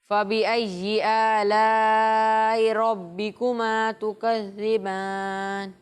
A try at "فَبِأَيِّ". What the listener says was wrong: اچھی کوشش کی آپ نے، لیکن بیٹا یہ ای جی نہیں ہے، جیم جیسی آواز نہیں آنی چاہیے، ٹھیک ہے؟ فَبِأَيِّ پڑھیں.